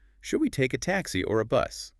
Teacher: rising intonation on taxi, falling on bus, clearly presents the choice.